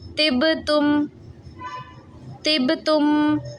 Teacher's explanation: با حروف قلقلہ اور اس پہ ساکن بھی ہے، قلقلہ خوب کریں گے